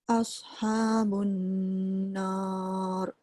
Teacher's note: Nun sabdu tu dengung sikit.